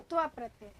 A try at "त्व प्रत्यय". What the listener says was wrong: त्व प्रत्यय अथवा ता प्रत्यय। हाँ, त्व प्रत्यय कहिए, हमको सुनाई दे रहा है ता प्रत्यय।